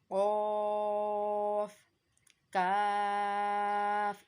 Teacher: कौफ जो है वो ज़बान की जड़ और तालु के नर्म हिस्से से अदा होता है।